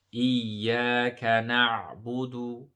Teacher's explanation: So remember the ayn, we need to emphasize that and stretch it a little bit.